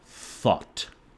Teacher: There's a position called interdental, which happens when your tongue is stuck between your teeth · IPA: θ